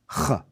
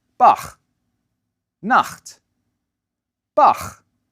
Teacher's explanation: The tongue bunches up in the back of the mouth, and air gets pushed out and over it. The result is a low, raspy sound.